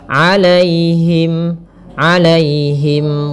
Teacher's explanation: Kemudian pada lafal alaihim di sini ada ya sukun yang didahului dengan fathah. Ini kita namakan dengan bacaan lin. Maka lembut dalam pelafalannya.